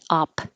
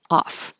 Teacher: you can choose to pronounce it like a P, op, or you can pronounce it as a PH like an F, off.